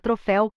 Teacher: na palavra troféu a sílaba mais forte da palavra é a última sendo assim uma palavra oxítona